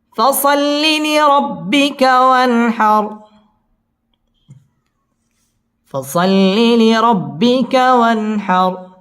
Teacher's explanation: ওয়ান হার ওয়ান এটা হচ্ছে ইজহার, নুন সাকিনের বামে হা আসছে, হা ইজহারের হরফ, গুন্না ছাড়া স্পষ্ট করে পড়তে হবে। ওয়ান হার র পুর হবে এবং রয়ের মধ্যে ওয়াকফ করতে হবে।